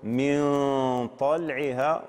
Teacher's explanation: فالغنة هنا تأخذ شكل وصفة حرف الإخفاء